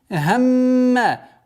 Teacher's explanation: удвоение буквы мим и удержание назализации в размере двухогласовок